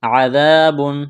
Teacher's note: دال کو نرم کرنا ہے، الف مدہ ہے، ایک الف کے برابر کھینچنا ہے